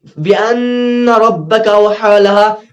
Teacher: بأن یہاں پر گناہ ہوگا نون پر، کیوں نون پر تشدید ہے